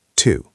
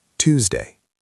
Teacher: Tuesday starts with a sharp t sound. Two. It feels like a little explosion behind your teeth.